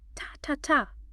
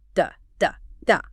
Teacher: D is voiced, vibratory.